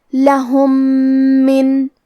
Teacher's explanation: تو ہم یہ میم کو دوسرے میم میں ملا کے ایک ہی میم تشدید کے ساتھ پڑھیں گے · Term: ادغام